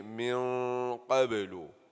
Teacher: Noon sakin followed by qaf, you do ikhfa here. Ikhfa means you hide this noon in the makhraj.